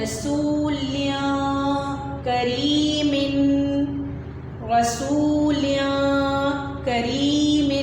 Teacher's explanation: کاف آ گیا حروف حلقی کے علاوہ، تو یہاں پر ہم نون کی آواز کو چھپا دیں گے ناک میں